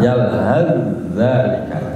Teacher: sa diidghamkan, dimasukkan ke dalam za, idgham mutaqarribain